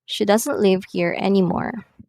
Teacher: the voice in falling intonation falls at the end of the sentence